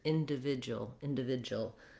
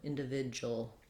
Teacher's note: Rather than individual, you might hear individual, where the oo kind of gets reduced and it's almost like just a jul